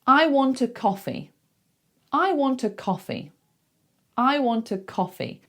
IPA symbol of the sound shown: ə